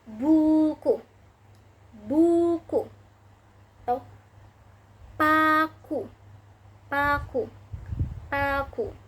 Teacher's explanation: Selanjutnya, dan yang terakhir yang ke-10, U dengan tinggi atas belakang dengan kondisi mulut tertutup menghasilkan kata buku, buku, atau paku, paku, paku.